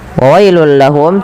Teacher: tanwinnya masuk ke huruf lam karena ia idgham bila gunnah. Adanya tanwin bertemu dengan huruf lam, masukkan ke lam.